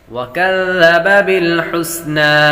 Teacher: ذال کو نرمی کے ساتھ پڑھیں گے، سیٹی کی آواز نہیں آئے گی